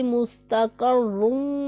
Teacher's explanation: रा साकिन है, उससे पहले ज़बर है तो रा पुर पड़ा जाएगा, और दाद भी पुर पड़ा जाने वाला हरफ है, इसे भी हम पुर पढ़ेंगे। सीन हरूफे सफ़ीरिया में से है, इसे सीटी की आवाज़ की तरह तेज़ पढ़ेंगे। और कॉफ भी पुर पड़ा जाने वाला हरफ है, और रा के ऊपर दो पेश है तो रा को पुर पढ़ेंगे।